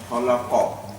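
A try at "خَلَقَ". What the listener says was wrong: You did it. That's correct.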